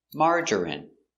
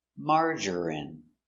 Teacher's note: 3 syllables, stress on the first syllable.